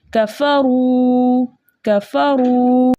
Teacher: रॉ के ऊपर पेश है, पेश को बगैर खींचे बगैर झटका दिए मुतवस्सित और मारूफ तरीके से पढ़ते हैं। रॉ के ऊपर पेश होने की वजह से हम रॉ को मोटा पढ़ेंगे · वाव साकिन उससे पहले किसी भी हर्फ के ऊपर पेश हो तो ऐसी वाव मद्दा कहलाती है। वाव मद्दा को 2 हरकत की मिकदार खींच कर पढ़ते हैं।